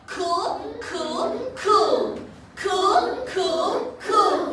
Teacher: l in the middle or at the end makes dark l sound so C with L cool cool cool cool cool cool CL